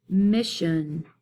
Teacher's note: Mission would have the second syllable to be unstressed because that's where I hear the schwa sound